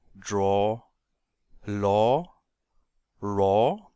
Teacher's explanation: man kann sagen dass das dumpfe a irgendwo zwischen A und O liegt